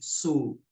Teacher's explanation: setelah ujung lidah menempel dengan gigi seri bawah, lidah belakangnya tidak naik sehingga lebih ringan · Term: huruf sin